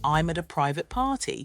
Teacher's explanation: the A and E in private are unstressed they're so subtle you barely notice them